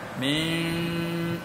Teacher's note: Hurufnya nun. Tapi bila kita baca ditukarkan nun akan mim. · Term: Iqlab